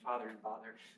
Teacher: father and bother sound the same